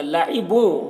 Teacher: الا میں الف مدہ ہے، 1 الف کے برابر کھینچیں گے. لعبوں بو میں ادغام ناقص ہو رہا ہے، تنوین کو او سے ملا کر غنہ کے ساتھ میں پڑھیں گے